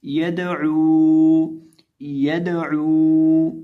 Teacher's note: अब यहाँ इस लफ्ज़ के अंदर हम दाल को हिलाकर पढ़ेंगे, कलकला करके पढ़ेंगे और आइन को खींच के पढ़ेंगे, एक अलिफ के बराबर लंबा करेंगे। यदऊ, यदऊ, यानी आइन को एक अलिफ के बराबर लंबा करके पढ़ेंगे